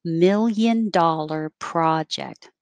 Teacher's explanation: $1 million project is like adjective, adjective, noun. So you step down.